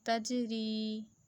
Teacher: جیم کو ہلا رہی ہوں، حروف قلقلہ ہے، تجری. اور ری کو لمبا کس لیے کر رہی ہوں کہ یہ ہمارا حروف مدہ ہے، یعنی یا ساکن سے پہلے زیر ہو تو ہم اسے لمبا کر کے پڑھتے ہیں.